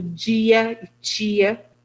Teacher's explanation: Pronúncias palatalizadas do D e do T